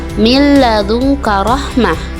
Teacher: nun matinya itu dimasukkan atau diidghamkan kepada huruf lam atau ro, tidak dibaca dengan jelas juga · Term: idgham bila gunah